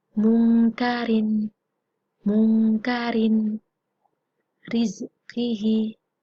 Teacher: ro berharokat kasroten atau berharokat kasro, itu dibaca tarkik atau tipis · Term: ro tarkik